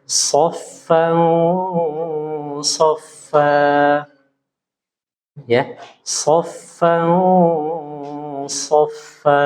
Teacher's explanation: Nun sukunnya atau tanwinnya itu samar tidak jelas, sambil pangkal lidahnya diangkat. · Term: ikhfa hakiki